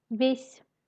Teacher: Le signe mou dans le mot весь ne se prononce pas et fait le son s molle.